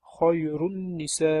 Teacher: xoyrunning nasi tushib qoldiriladi va keyingini g'unna bilan o'qiladi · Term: g'unna bilan idg'om